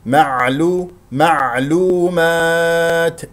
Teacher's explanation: لا تقلقل ساكنه هنا تقول معلو معلو هذا خطا هذه قلقله العين يجري فيها الصوت فتره زمنيه بسيطه لانها من احرف لنعمر وهي تخرج من وسط الحلق